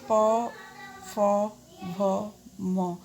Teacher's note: ये सारे वर्ड बोलने में होंठ आपस में मिल रहे हैं, मतलब ये ओष्ठ वर्ण होंगे।